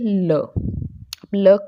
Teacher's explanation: आगे है पार्श्विक व्यंजन। तो जिन व्यंजनों के उच्चारण के समय जीवा का अग्रभाग मसूड़ों को छुए और वायु पार्श्व बगल से एक साइड से जीवा के निकल जाए बाहर, ठीक है, तो पार्श्विक व्यंजन कहते हैं।